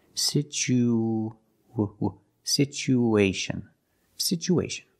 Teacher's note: After the U, situ, we need to link the U with the A. So we have an extra sound. It's like a W sound, like a W, to link these two vowels.